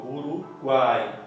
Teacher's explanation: sai totalmente pela boca, não tem nenhuma interrupção, não sai nada pelo nariz.